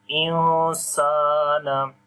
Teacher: on the noon we hide the sound of noon due to ikhfa sound, because the rule is after the noon sakin or tanween, if the next letter is one of from 15 ikhfa letters, so we make ikhfa sound there.